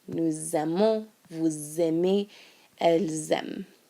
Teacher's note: Okay, note that in these 3 forms, because it ends in an S and the next word begins with a vowel, we're going to hear a Z sound